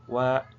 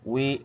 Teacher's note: Tetapi kalau wnya berkas berharakat dia bukan makhraj jauf tetapi masuknya ke makhraj syafatain dua dua bibir